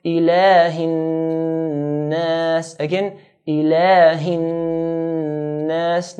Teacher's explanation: So we're going to stretch the lam to 2 counts